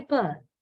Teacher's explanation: comparatively we don't feel that much of a vibration when we say purr of course the we feel the vibration in both cases but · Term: voiceless sound